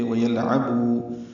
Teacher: لام ساکن پہ اظہار عین وسط حلق سے ادا ہوگا، بو واو مدہ، دو حرکات لمبا کریں گے۔